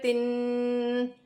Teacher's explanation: یہ جو تن کی آواز ہے اسے غنہ کہا جاتا ہے۔ غنے کی آواز ناک میں لے جانی ہوتی ہے۔